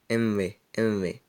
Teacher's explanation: Ela é feita, como vocês já devem imaginar, posicionando a sua boca como se você fosse pronunciar a letra V, só que pronunciando M. M, M. É representada no nosso alfabeto por M, V, apóstrofo, para dizer que não é MV, falando uma letra depois da outra.